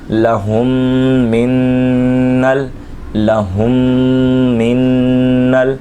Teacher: زبر نل، لہم من نل، یہاں نون مشدد بھی ہے، میم ساکن کا غنہ بھی کریں گے، نون مشدد کا بھی غنہ کریں گے